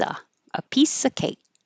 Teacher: Uh piece instead of you can drop that V because the next um word begins with a consonant